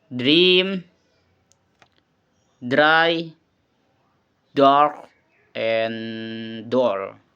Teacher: voiced, alveolar, and plosive, made in the same place like t, but with vocal cord vibration